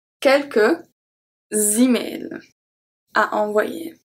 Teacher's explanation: the S from quelques is going to be transferred to email and will make a Z sound